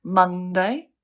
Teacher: So something like Monday, the stress is on the first syllable